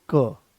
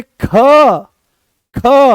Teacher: कोई ज्यादा जोर नहीं लगाना पड़ा, आराम से वो आ गया है क, कम प्राणवायु की आवश्यकता पड़ी, आराम से आपने उसको बोल दिया। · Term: अल्प प्राण